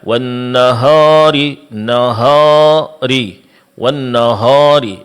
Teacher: Menebalkan bunyi alif mad di tempat yang di situ dia semestinya tipis. Seperti wannahari dibaca wnahari nahari w nahari.